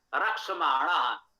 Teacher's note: देखिए यहां वही बात है, गतिमान में तो ना है, यहां इस ना का णा हो गया, क्योंकि वही रा है। रक्ष, ये सा जो है ये भी मूर्धन्य है, रा भी मूर्धन्य है, तो उसके प्रभाव से ना का णा हो गया, णा भी मूर्धन्य है।